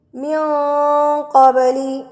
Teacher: Heavy اکفا کیا جائے گا، موٹا اکفا کیا جائے گا. ہونٹوں کو تھوڑا سا گول کر لیں گے تو موٹا ہو جائے گا.